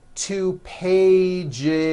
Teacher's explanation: it's not two pages unvoiced no it's two pages with a voiced Z